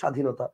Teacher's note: যেমন আপনি দেখেন, একটু খেয়াল করে দেখেন স্বাধীনতা, আপনি খেয়াল করেন ব ফলা আছে কিন্তু ব ফলার উচ্চারণটা আপনি করতেছেন না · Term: ফলার ব